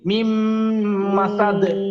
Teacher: মিম মা সাদ বললে আবার মাতে একালিফ টান হয়ে যায়, এখানে কিন্তু একালিফ নাই